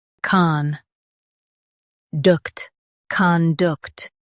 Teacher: Stress, duct. And keep con soft.